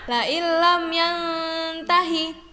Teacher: Jadi huruf lamnya ditasydidkan dan tanpa mendengung atau jelas. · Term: idgham bilaguna